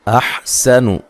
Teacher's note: سین کو باریک سیٹی سے ادا کرنا ہے، نون کو لمبا نہیں کرنا.